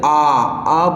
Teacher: जैसे आ बोलने पर दोस्तों हमारा मुख पूरी तरह से खुला रहता है